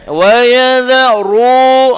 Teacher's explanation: huruf ra tu baris depan 2 harokat mad asli tu tuan-tuan kena tekan. Wa yadharu, gitu tebal, tafkhim.